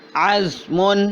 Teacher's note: زا باریک اور سیٹی والی